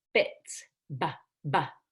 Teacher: in B it's voiced and you're going to let your vocal cords vibrate